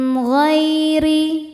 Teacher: ghai ada harfulin atau huruf lin sebab ada ya sukun sebelumnya baris fathah. Cara bacanya dilembutkan atau dilunakkan. · Huruf ro dibaca secara tarqik karena ro berharakat kasrah. Cara bacanya ro dibaca dengan tipis. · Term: tarqiq